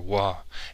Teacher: represented the voiced labial velar approximant W